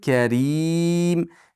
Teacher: karim ri ingichka bo'ladi, chunki kasralik rim cho'zib to'xtaymiz.